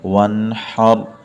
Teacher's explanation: آ جائے تب بھی را کو موٹا کر کے پڑھیں گے، یہاں پر را ساکن سے پہلے حرف پر زبر ہے تو اس لیے را کو موٹا پڑھیں گے